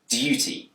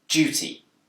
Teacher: In Britain, this word can be pronounced with a d sound, duty. But it's also commonly pronounced with a j sound, duty.